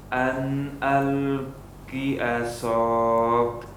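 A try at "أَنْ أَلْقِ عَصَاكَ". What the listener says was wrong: Tayyib, seperti itu. Tapi soalnya kurang panjang, 4 harakat.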